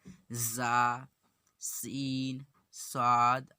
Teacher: نوک زبان اوپر نیچے کے دانتوں سے مل کر زا، سین، صاد ادا ہوتے ہیں۔